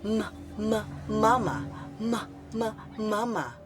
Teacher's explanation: hindi sa bibig kundi sa ilong lumalabas · ang hangin na nahaharang dahil sa pagtikom ng mga labi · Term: pailong